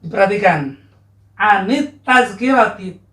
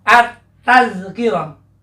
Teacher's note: Diperhatikan, anit tazkirati, ta ini adalah salah satu huruf syamsiah, huruf matahari. Alif dan lam pada kata at-tazkirah, alif lam pada kata at-tazkirah ini tidak akan terbaca karena ini akan diidghamkan, dilebur dengan huruf ta. Huruf ta-nya ada tasdidnya, at-tazkirah, tidak al-tazkirah.